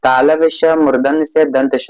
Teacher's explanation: इन्हें बोलने से सांस की ऊष्मा चलती है। ये संघर्षी व्यंजन है। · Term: ऊष्म व्यंजन